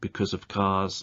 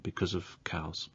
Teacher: heard because of because of the weak form of of and the sound at the end of because linking to the word of in its weak form